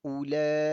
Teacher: Mad wajib mutasil 4 harakat.